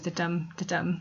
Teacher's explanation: So blank verse is where we have iambic pentameter, as in 5 pairs of syllables in the line, the pattern of which goes to dum to dum. So we have an unstressed syllable and then a stressed syllable.